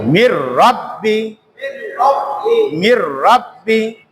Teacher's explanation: মিম রাজের মির, রা বা জবর রব, বাজের বি, মির রব্বি, মির রব্বি। কোনোভাবে যেন নুনের উচ্চারণটা না আসে, মিন রব্বি যাতে না হয়। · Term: ঈদগম